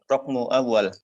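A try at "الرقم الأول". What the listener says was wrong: Ar-raqmul awal. Kalau ingin pakai alif lam, antum baca ar-raqmul awal.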